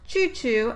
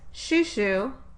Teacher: the affricate is changed to a fricative, not to a stop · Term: deaffrication